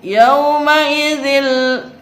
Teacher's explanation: tanwin kasroh bertemu dengan huruf lam disebut idgham bila gunah, tidak boleh dengung.